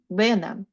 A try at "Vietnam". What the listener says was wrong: In this case, Nam is longer than Vietnam, not Vietnam. Vietnam.